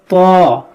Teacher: آپ کو ہونٹ گول نہیں ہونے دیں, آپ ویسے ہی موٹا کریں زبان سے